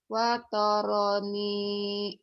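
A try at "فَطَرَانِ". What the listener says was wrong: Fa bukan wa. Fa. Kedengarannya kayak wa. Fatarani.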